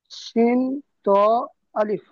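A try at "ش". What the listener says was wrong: না, এটা শিন নয়। শিন কিরকম হয়? শিন।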